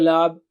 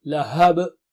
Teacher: ha should be clear, don't say lab, lahab, and qalqala is there at the end.